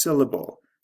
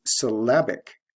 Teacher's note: a b l e endings and the adjective form is syllabic notice the stress shift from first syllable to second syllable